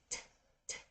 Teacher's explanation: the T sound is voiceless because if you place your hand here and you say it t you will feel that your hand doesn't vibrate at all nothing okay it's just air and so in this case we're